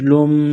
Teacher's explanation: میم مشدد ہے تو یہاں پر غنہ کریں گے